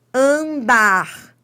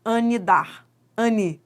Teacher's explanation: No dígrafo vocálico, o som da vogal é nasalizado. O m nasaliza o a.